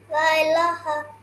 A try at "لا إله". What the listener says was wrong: لا একটু দীর্ঘ করবো হ্যাঁ لا إله